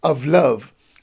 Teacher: of would be unstressed and love would be a stress one